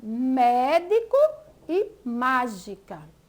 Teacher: elas são pronunciadas com mais forte ou mais força e elas estão localizadas na antepenúltima sílaba · É quando a sílaba tônica, né, a mais forte, ela é a antepenúltima. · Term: proparoxítona